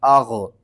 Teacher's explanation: ما اغنی، حمزہ غین زبر اغ، غین کو آپ نے حلق کے سب سے اوپر والے حصے سے ادا کرنا ہے